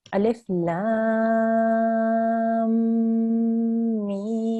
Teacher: Now, the one thing we have to be very careful with here is we have to remember that this is a mim gunna. So when we are joining, we have to hold on that sound for 2 seconds.